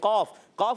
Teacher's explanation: قاف, قاف حروف قلقلہ میں سے زبان کی جڑ تالو کے نرم حصے سے قاف ادا ہوتا ہے